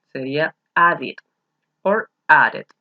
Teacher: Al terminar con sonido final de D, se pronuncia la ed también.